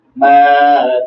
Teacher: میم کے ساتھ الف مدہ، ہا کے اوپر الٹی پیش جو واو مدہ کی طرح پڑھی جائے گی